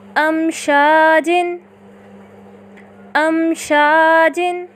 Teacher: ہم نے میم ساکنہ کو ظاہر کر کے پڑھا